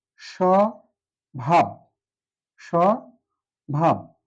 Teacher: স্বভাব শব্দটি প্রথমে ব ফলা যুক্ত আছে, আর যুক্ত থাকার কারণে এই বয়ের উচ্চারণ নেই